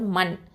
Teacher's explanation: மீம்ங்கிறது என்னது, இது வந்து உதட எழுத்து ஷஃபத்தான். நூன் வந்து உங்களுக்கு தரஃபுல் லிசான், நுனினாவை எழுத்து.